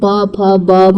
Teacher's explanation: प फ ब म के वर्ग का उच्चारण दोनों ओठों के परस्पर से मेल होता है, इसलिए इन्हें ओष्ठ कहते हैं।